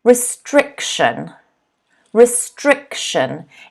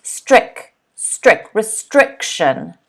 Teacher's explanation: you'll notice the stress is on the second syllable